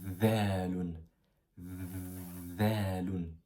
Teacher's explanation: Tu vois, la langue, elle est derrière les dents. Pour prononcer la lettre Zaloun, il faut mettre la langue juste en dessous des dents en haut.